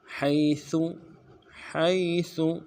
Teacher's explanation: ہا کو یا کے ساتھ ملانا ہے، یا لین ہے بغیر کھینچے پڑیں گے